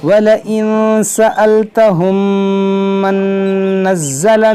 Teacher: میم ساکن کے بعد میم ہے، یہاں پر ادغام شفوی ہوگا